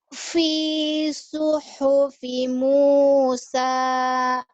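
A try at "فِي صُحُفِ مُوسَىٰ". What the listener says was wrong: Fi fi fi suhufi Musa. Kalau tinggi jangan di awalnya dulu. Fi suhufi Musa. Kalau tinggi sekalian. Iya, fi suhufi Musa.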